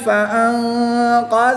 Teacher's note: نون ساکن کے بعد کاف حروف اخفا میں سے تو یہاں پر اخفا ہوگا یعنی غنہ غمانی کر کے پڑھیں گے۔